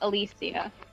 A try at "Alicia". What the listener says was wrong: There is no sh sound. It is a c sound or an s sound. Alicia.